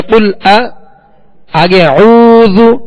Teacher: حمزہ پر زبر ہے، حمزہ کو دراز نہیں کریں گے